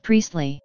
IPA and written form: ˈpriːstli (Priestley)